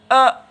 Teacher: अ जो है ये जिह्वा पीछे चली जाती है और इसके पास रहती है, ठीक है। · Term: कंठ